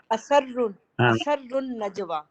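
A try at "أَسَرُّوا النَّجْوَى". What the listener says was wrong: دیکھیے اثر اثر اثر اثر اثر ہاں، اس میں آپ جو اسا پڑھ رہے ہیں تو اس سے شدہ سین پہ ظاہر ہو رہا ہے، اثر اثر اثر اثرو اثرو اثرو نہیں اثرو۔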